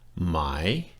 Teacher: tone your normal voice and then the last word my my it's got a rising tone on it right it goes down a little bit and then comes up